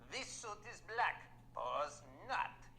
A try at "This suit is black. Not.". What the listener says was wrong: No, you don't say pause. This suit is black. That's a pause. Not.